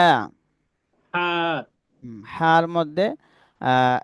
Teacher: হা একটু গলা চাপ দিয়ে হা উচ্চারণ করব।